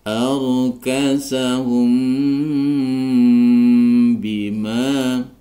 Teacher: mim sukun bertemu dengan ba maka dibaca Ikhfa Syafawi cara membacanya disamarkan disertai dengung